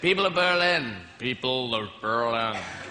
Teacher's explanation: Notice how his voice moves back in his throat and down in his chest when he's imitating the American accent. This throaty quality is an essential characteristic.